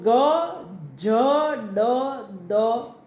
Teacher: ઘોષ અલ્પપ્રાણ તો ગ ડ દ